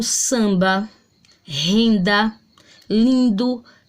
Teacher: M e N em final de sílabas não representam fonemas, são letras nasalizadoras, têm a função do tio.